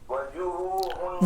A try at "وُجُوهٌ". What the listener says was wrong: وا نہیں پڑھنا، وہ پڑھنا ہے، وہ واو کے اوپر پیش پڑھنی ہے.